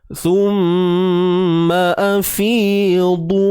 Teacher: Fi huruf fa baris bawah, kita panjangkan 2 harakat, ada ya mad sebelumnya baris bawah. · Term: Mak asli